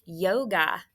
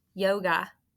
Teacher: open syllable with a macron over that long vowel o and ga is an open syllable exception with a schwa over the a it's not a long vowel